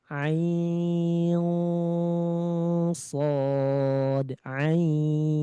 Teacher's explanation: ikhfanya tebal karena bertemu shad